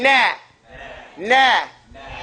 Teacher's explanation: So you don't say no. You don't make your mouth round. You say nah. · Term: fathun